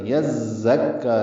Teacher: زا کو تیز صفیر کی آواز سے نکالنا ہے